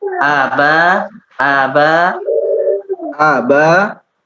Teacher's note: Untuk di aba itu hamzahnya pendek, ba-nya yang panjang.